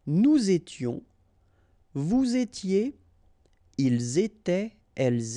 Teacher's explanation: final S not pronounced, and then you make the liaison.